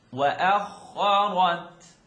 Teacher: Now kha lives in the third part of the throat. We know that the one right underneath the tonsils, so it's the highest part of your throat.